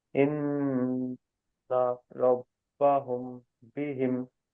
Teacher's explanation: মিম সাকিনের পরে যদি বা আসে তাহলে মিমকে এক আলিফ পরিমাণ গুন্না সহ পড়তে হয় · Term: ইকফায়ে সাফাবি